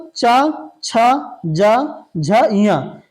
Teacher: च छ ज झ ञ इतने वर्ग का उच्चारण स्थान तालू होता है · जीभ जब तालु को स्पर्श करती है तो उसका उच्चारण स्थान तालु या तालब होता है। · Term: तालव्य